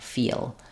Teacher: If you're having trouble distinguishing these two, it's probably because you're trying to make the L more with your lips, like feel, and you want to make sure that your lips are not rounded on feel, that you're really making it by finishing and lifting your tongue.